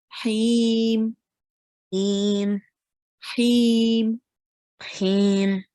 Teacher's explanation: So this ha comes from your throat.